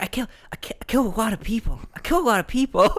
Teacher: he says it like a little kid. He says it like really breathy.